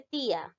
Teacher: vocal abierta más vocal cerrada tónica la cerrada debe llevar mayor fuerza de voz